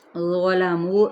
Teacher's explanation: نرم بھی ادا کرنا ہے اور ساتھ میں موٹا یعنی پر پڑھنا ہے، منہ پہ واو مدہ۔